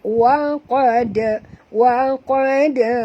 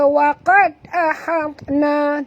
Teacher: Huruf qaf tebal, dal tak tebal. Dal ni lunak. Lantunkan dengan lunak. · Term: huruf qalqalah